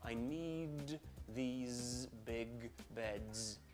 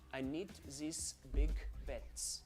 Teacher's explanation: can you hear how Buzzy the voice is at the end of the word